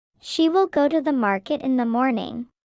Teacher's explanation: So in natural speech, it sounds more like go market morning, with reduced function words in between.